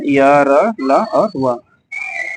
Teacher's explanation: इनका उच्चारण जिह्वा मतलब जीभ, तालु, दांत और ओठों के परस्पर सटाने से होता है, किंतु कहीं पर भी पूर्ण स्पर्श नहीं होता है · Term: अंतस्थ व्यंजन